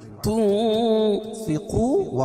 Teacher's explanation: یہاں ناک میں آواز کو چھپا کر پڑھیں گے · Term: اخفا حقیقی